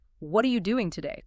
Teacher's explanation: you'd probably stress and clap on what maybe doing and day